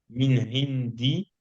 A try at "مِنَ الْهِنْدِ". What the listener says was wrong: Min al-Hind. prononce le lam, hein. On prononce le lam, hein.